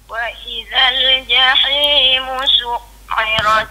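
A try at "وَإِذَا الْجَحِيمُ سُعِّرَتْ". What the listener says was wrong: Jangan bagi putus. Su'irat. Ain tu jangan bagi putus. Dia kena tahan bunyi ain tu. Su'irat.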